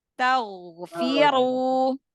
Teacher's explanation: angkat pangkal lidah ya, karena ghin kan huruf tebal. Taghfiru. Ya, jangan terlalu ditekan biar enggak terlalu kedengar seperti suara ngoroknya terlalu besar.